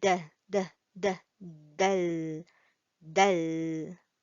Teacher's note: the tip of our tongue or the front part of our tongue is actually touching the frontal part of our gum near to our teeth, top front teeth